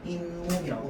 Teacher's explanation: 앞말과 뒷말 사이에 니은 소리가 덧나는 경우